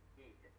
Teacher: tapping that D on he'd, you're putting a little bit of a voice release at the end